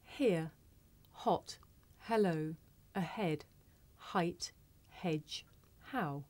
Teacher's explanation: This is a voiceless consonant. It makes very little sound because it's really just your breath. You can hear it at the beginning of the word here.